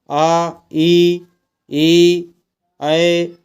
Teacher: ओट जैसे हैं वैसे ही रहेंगे मतलब गोल नहीं होंगे